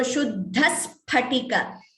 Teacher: Shuddhas Phatika is different from saying Shuddhas Phatika. So, you are hearing that extra S, double sound. That is Dvitvam.